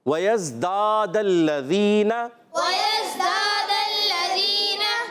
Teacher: دال الف زبر دا، اور پھر دوسرا دال جو ہے اس کی زبر ڈائریکٹ لام سے مل جائیں گی